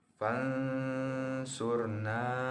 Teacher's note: Contoh fansurna, nun mati bertemu dengan huruf so, maka dibaca dengan samar dengan dengung. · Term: ikhfa